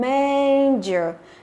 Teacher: nhấn vào âm thứ nhất